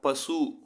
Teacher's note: தனிக்குறில் எழுத்து அடுத்து வரும் வல்லின உகரங்களில் சேரும் பொழுது பார்த்திங்கன்னா ஒரு மாத்திரை அளவுலேயே முழுமையாக ஒலிக்கும்